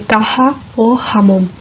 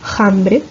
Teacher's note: en la parte andaluza occidental, pues se da la pronunciación aspirada